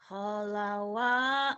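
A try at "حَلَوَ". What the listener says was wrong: kenapa jadi ho ya, jangan jadi ho. Halawa, halawa.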